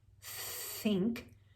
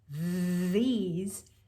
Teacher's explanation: There's the TH with no voice, like in the word think, and then start the word these, and notice there's a pitch there now.